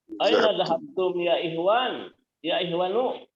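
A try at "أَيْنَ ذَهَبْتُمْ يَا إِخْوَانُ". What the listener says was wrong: Masya Allah. Baru buka langsung bener bacanya.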